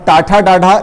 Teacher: तालु से, यानी कि तालव्य व्यंजन कहलाते हैं। और टाठा डाढ़ा ये जो है आपके मूर्धा से बोले जाते हैं, जिनको हम मूर्धन्य व्यंजन कहते हैं